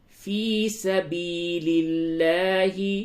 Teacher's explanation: لام کو باریک کریں گے، لفظ اللہ کے لام سے قبل زیر ہے